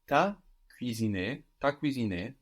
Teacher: whilst tu doesn't generally contract, tu and a can contract in the spoken language